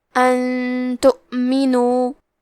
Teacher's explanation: کلمت ان کے آخری میں نون ساکن ہے، پھر حرف تا ہے کلمت تؤمنو، تا حروف الاخفاء میں سے ہے تو ہم نون ساکن کو چھپاتے ہوئے اور غنہ کے ساتھ یہ حکم کو ادا کریں گے